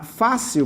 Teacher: uma paroxítona, que é a penúltima sílaba mais forte, terminada em L, ela tem que levar acento.